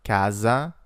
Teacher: A single S between two vowels makes a Z sound